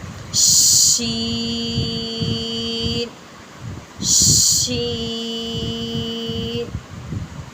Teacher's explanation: شین بھی سٹی والی آواز ہے، اس کو ہم سٹی کی طرح آواز نکالیں گے اور کھینچ کے